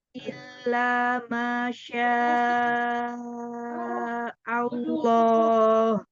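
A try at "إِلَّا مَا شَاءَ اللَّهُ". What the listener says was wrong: Allahnya bagus, tapi haknya jangan ikut nebal. Haknya tipiskan. Illa masya Allah.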